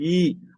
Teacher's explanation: நாக்கோட இடைப்பகுதி வந்து 2 ஓரமும் தடிக்கும். சிம்பிளா சொல்லணும்னா நாக்கோட ஓரங்கள் தடிக்கும்.